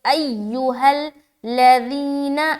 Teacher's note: یا میں مد کیا، ای میں سختی کے ساتھ ملائیں گے، ایھا الذین، ذی میں بہت ہی نرمی کے ساتھ کھینچ رہے ہیں یا مدہ کر رہے ہیں